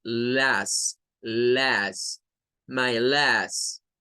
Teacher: parece una a del español pero lleva una e en medio de ella